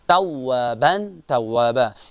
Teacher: توابا جو ہے وا پر تشدید تو یہاں پر شدت کے ساتھ اس کو ادا کیا جائے گا